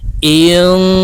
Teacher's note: নুন সাকিনের পরে ইকফার হরফ সিন আসছে, তাই এই নুনকে নাকের ভিতরে লুকাইয়া গুন্নার সহিত পড়ব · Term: ইকফা গুন্না